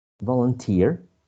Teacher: the primary stress in the last syllable